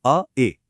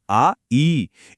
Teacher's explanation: इन्हें बोलने में ह्रस्व से डबल टाइम लगता है। ध्वनि थोड़ी खींच जाती है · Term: दीर्घ स्वर